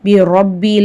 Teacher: ஜேர் இருக்கு ராவ நம்ம வந்து லைட்டா ஓதணும் லம் உஷ்ரிக் பிரப்பி ரப்பி ரா மேல ஜபர் இருக்கு ரா வல்லினமா ஓதணும் ரப்பீல வந்து சின்ன மது இருக்கு மூணுல இருந்து நாலு அலிப் வரைக்கும் நல்லா